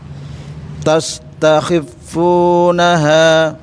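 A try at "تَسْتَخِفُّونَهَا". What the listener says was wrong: Agak ditahan Pak. Huruf fa ini warnanya kuning ya, itu kotaknya. Tahan dia, rokhawah dia. Khifunaha gitu.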